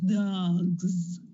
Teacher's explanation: of the vocal cords but then when you have dog dog the G has vibration so when you put the s for the plural it becomes Z